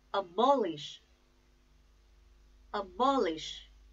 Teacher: the stress is on second syllable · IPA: /əˈbɒlɪʃ/